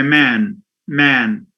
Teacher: The a here is nasalized because there is a n sound at the end.